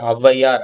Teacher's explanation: அவ் வந்து இரண்டு மாத்திரையில இருந்து ஒன்றரை மாத்திரை அளவு குறைந்து ஒலிக்கும் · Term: அவகார குறுக்கம், அவுகார குறுக்கம்